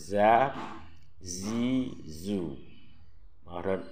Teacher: Kalau berbaris za, zi, zu. Makhrajnya ujung lidah dengan papan urat gigi yang di atas.